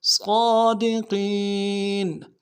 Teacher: صاد کو موٹا ادا کریں گے، اور صاد کے اوپر کھڑا زبر ہے، ایک الف دال میں کھینچیں گے ، دال کو نرم سے ادا کریں گے، قاف کو موٹا